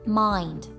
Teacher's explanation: The Brooklyn dialect also alters the standard pronunciation of such words as mind to the full and rounder sound of mind